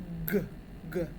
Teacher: Which of the following words contains the voiced, unaspirated velar plosive phone? It's velar, so your tongue touches the velum. And it's a plosive. And it's voiced, so it's g, g.